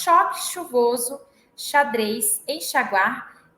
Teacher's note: o fonema sh, né, que é a fricativa palatal desvozeada